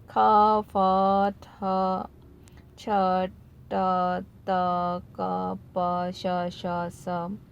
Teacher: ख फ थ छ ट त क प श स, इन सब का बाह्य प्रयत्न क्या है? विवार, श्वास और अघोष होता है।